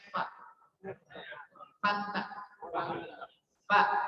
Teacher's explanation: Fa kan ujung gigi nih, seri nempel ke perut bibir bawah. Nih, coba. Fa.